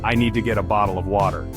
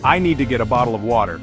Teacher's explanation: hear how the t's sound almost like D's · But a Brit would say, "I need to get a bottle of water," with crisp, clear T's. In American English, the T often becomes what linguists call a flap